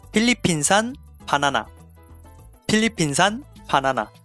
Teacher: Now remember to change the F sound to P. We don't have the F sound in Korean. And also treat the Philippines as a singular, so without S at the end.